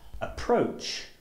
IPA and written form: əˈprəʊtʆ (approach)